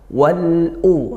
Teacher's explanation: lamnya terbaca tidak idgham tapi dibaca jelas lamnya karena dia bertemu huruf hamzah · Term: lam sukun